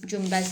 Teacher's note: söz ortasına N hərfi B M hərflərindən əvvəl gələndə M səsi kimi tələffüz olunur